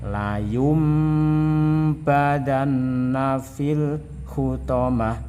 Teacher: yang bertemu dengan huruf ba' harus dibalik dan mendengung maksudnya adalah nun mati dibalik menjadi suara mim dan kemudian didengung-dengungkan